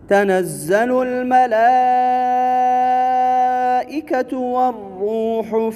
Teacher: ملائکہ تو یہاں پر جو مد ہے مد واجب ہے، 5 الفی مد